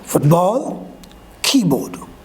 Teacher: Two same weight words like blackboard, housewife, this type of words, the first word will be stressed and the second word will be unstressed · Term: compound noun